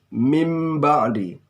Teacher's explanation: Nun sukun bertemu dengan ba. Bunyinya berubah. Bukan min ba'di, tetapi mim ba'di. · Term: iqlab